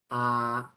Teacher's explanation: cuando pronunciamos la a la lengua no va ni adelante ni atrás está en su posición normal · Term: vocal central